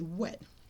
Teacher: instead of r, an R sound, you might say w. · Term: articulation